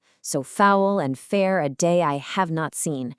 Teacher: It has an unstressed stressed beat like a heartbeat. Dum dum so foul and fair a day I have not seen.